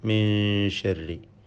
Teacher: ഇതിൽ സാക്കിനായ നൂനിനെ ഇഖ്ഫ ഹഖീഖി നൽകി അവ്യക്തമാക്കി മണിക്കേണ്ടതാണ്. മണിച്ചുകൊണ്ട് ഉച്ചരിക്കണം.